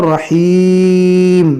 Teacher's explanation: اس کو پڑھیں گے رحیم, تھوڑا کھینچ کے اس دو پیش کو ساکن کریں گے, یہاں مد عارض قاعدہ لگے گا.